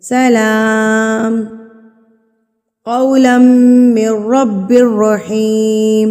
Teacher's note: جب سلام پڑھ لیں گے نا بغیر سانس توڑے تھوڑا سا رک جائیں گے، یعنی کہ ایک حرکت کے برابر آپ رک جائیں گے، اس کے سانس نہیں ٹوٹنی چاہیے، سانس آپ کی رک جانی چاہیے، سکتہ جس کو بولتے ہیں، رک جائے گی سانس، پھر آپ بغیر سانس توڑے اب باقی کی آیت کو مکمل کریں گے۔